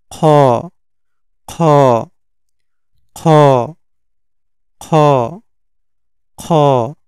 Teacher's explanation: খ উচ্চারণ হবে হচ্ছে হলকের শেষ থেকে এক আলিফ টেনে উচ্চারণ করতে হবে